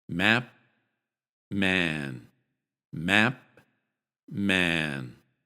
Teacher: this vowel is short in the word map and long in the word man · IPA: [æ]